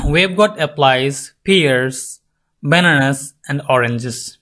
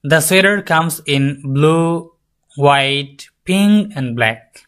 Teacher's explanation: আমরা যখন একটা লিস্ট বলি বা আমরা কয়েকটা নাম একসাথে বলি, তখন আমাদের হচ্ছে এই যে ব্যাপারটা হয়, রাইজিং, falling, last এটা falling. Intonation falls on the last items to show that the last is finished, right? So যখন আপনি এরকম একটা লিস্ট বলবেন, যে কয়েকটা নাম একসাথে বলবেন, তখন লাস্ট যেই ফাইনালি যে আপনি বলতে যাচ্ছেন সেটা কিন্তু আপনার ফল হবে, বাকি আগের সবগুলো রাইজ হবে। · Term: lists